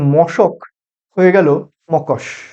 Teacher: দুটো পদের মাঝখানে যদি দুটো ধ্বনি যদি স্থান পরিবর্তন করে নেয় তখন সেক্ষেত্রে হয়ে যাবে বিপর্যয়